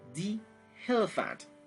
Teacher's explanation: lorsque le nom, soit le mot, commence par une voyelle ou soit un H muet, vous prononcez di